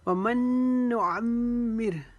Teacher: ومن نعمر، میم مشدد کی وجہ سے یہاں پر پھر میم مشدد کا غنہ کریں گے، ایک الف کے جتنا یہاں پر ہم غنہ کریں گے